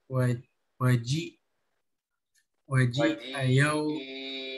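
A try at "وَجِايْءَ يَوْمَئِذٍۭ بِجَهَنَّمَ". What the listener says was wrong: Itu panjang itu. Ketemu itu matobihi bertemu hamzah, tetapi satu kata. Mad wajib.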